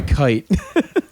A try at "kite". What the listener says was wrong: Hard T there, hard T.